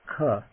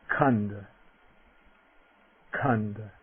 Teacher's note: now the voiceless aspirate, K. A little puff of air